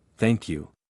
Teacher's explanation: the th sound in thank is soft put your tongue between your teeth slightly